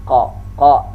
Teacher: Qa ini huruf lisani, pangkal lidah dengan langit-langit dekat dengan pita suara. Qa. Nah, qa ini dia syiddah, sifatnya tertahan.